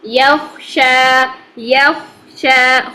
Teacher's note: خو کو موٹا رکھیں گے، ٹھیک ہے؟ اور شا 2 حرکات ہم نے کھینچ کے کھڑا زبر کو لمبا کیا